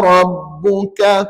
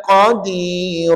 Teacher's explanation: Mesti ada beza kaf dengan qaf. Kalau rabbuka itu kaf. Kalau qadira itu qaf. Ha jadi satu nipis, satu tebal.